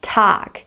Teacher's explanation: For the word tag, we have a longstretched a sound.